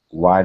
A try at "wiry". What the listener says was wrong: Give me a good R instead of whitey. Wiry, wiry.